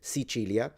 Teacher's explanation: You can say Sichilia where the C is pronounced with a ch sound. Sichilia. This is kind of the standard Italian way of pronouncing it.